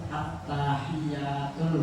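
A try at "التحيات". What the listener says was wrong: Ya-nya panjang. At-tahiyatul. I-nya panjang, ya-nya panjang. At-tahi, tanya dan panjang. At-tahiyatul.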